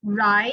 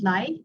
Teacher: you have here your central and your lateral, both voiced, ri and li, your letter R and letter L.